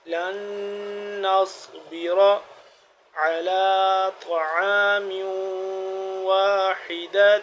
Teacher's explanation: اب یہاں پہ ہم پہلے غنہ کریں گے پھر صاد کو موٹا، صاد موٹا پڑھیں گے اور را بھی موٹا پڑھیں گے